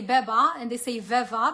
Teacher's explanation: it's between a b and a v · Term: fricative